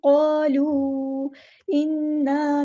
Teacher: نون پہ غنہ زمانی ہو رہا ہے، ہم نے رکنا بھی ہے اور ایک الف کے برابر لمبا بھی کرنا ہے کیونکہ ہمارے پاس الف مد آیا ہے۔